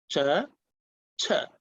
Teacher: The second one is called aspirated with the puff of air.